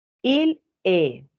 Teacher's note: Je prononce pas le S et le T final.